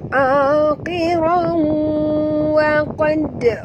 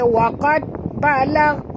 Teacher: huruf dal bila dia mati di tengah-tengah kalimah, kita kena lantunkan dia dengan lantunan kecil, qalqalah sughra, dan huruf qaf ni jaga makhrajnya tebal.